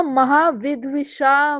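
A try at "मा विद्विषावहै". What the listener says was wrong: महा नहीं, माँ।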